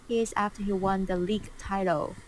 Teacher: The way the league and the title kind of flowed into each other.